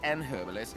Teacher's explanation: says an herbalist and doesn't pronounce the H